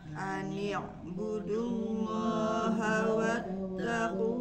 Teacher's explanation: pangkal lidahnya lidah yang paling ujung yang dalam ini naik ke atas dinaikkan supaya pembacaannya jadi tebal beda dengan huruf ta itu si pangkal lidahnya tidak naik Kalau